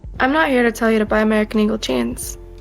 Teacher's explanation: The vocal fry had the comment section rolling their eyes